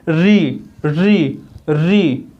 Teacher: मूर्धा पर जोर जा रहा है, मूर्धा को स्पर्श कर रहा है हमारे जीवा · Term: मूर्धन्य व्यंजन